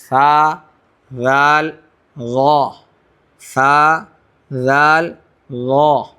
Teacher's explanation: زبان کی نوک اور ثنایا علیہ کا کنارہ, یہ یعنی اوپر والے دانت کا کنارہ, وہاں سے ثا, ذال, غا, ثا, ذال, غا, 3 حرف ادا ہوں گے یہاں سے.